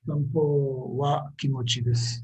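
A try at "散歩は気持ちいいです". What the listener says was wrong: Exactly. Yes.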